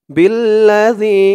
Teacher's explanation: জালের উচ্চারণটা একদম নরম পাতলা করতে হবে জিহ্বার মাথা উপরের দাঁতের মাথার সাথে লাগবে